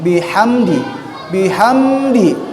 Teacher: hukumnya bihamdi adalah izhar syafawi. Jadi jelas bibirnya. Jangan ada tahanan. Bihamdi. Bihamdi, ya.